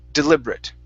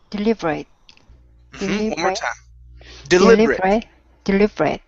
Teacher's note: Okay, so here at the very end, even though we have an ATE, there are some words in English that end with an ATE, and that ATE is pronounced like a short I and a T. This is one of those words.